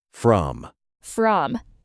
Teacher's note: Many learners say I am from Spain. Long vowel, like room. But the correct way is I'm from Spain. Short. Quick.